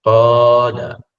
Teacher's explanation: sebutan qala bukan setakat tebal, bahkan dilanjutkan sebutannya bila ada mat.